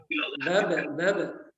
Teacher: Nah, terasa kalau dimatikan huruf itu ya di mana makhrajnya. Jadi makhraj huruf ba adalah syaffatain atau dua bibir.